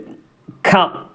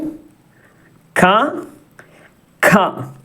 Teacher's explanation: കന്റെ കൂടെ ഒരു ഉച്ചാരണത്തിൽ ഒരു ഹ കൂടിവരും